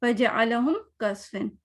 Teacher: ہم کا کوئی لمبا نہیں کرنا, کوئی ایک حرکت ہی ہوگی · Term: اظہار شفوی